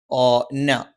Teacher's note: ന, നാവിന്റെ അറ്റം മേലെ മുൻപല്ലിന്റെ മോണയിലാണ്.